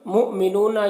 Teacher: مؤمنون یہاں پر حمزہ ساکنہ ہے، جھٹکا لگا کر پڑھیں گے